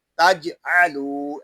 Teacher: फला तजअलू, यहाँ पे लाम को एक अलिफ तक खींच कर पढ़ेंगे क्योंकि यहाँ अलिफ मद्दा हो रहा है। जीम साकिन में कलकला होगा, इसको तज नहीं पढ़ेंगे बल्कि तजअलू ऐसे पढ़ेंगे।